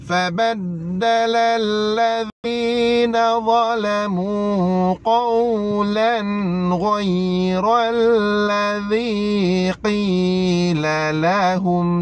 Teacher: Ra berbaris fathah, maka kena tebalkan ra tersebut. Jadi ra ini ra tafkhim, ra tebal.